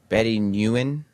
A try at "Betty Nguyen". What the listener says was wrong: Got to pronounce that G. You gotta. Every letter, Every letter that's in a word is there for a reason. You got to pronounce every one of those fucking letters. So that's Betty Nguyen. Nguyen.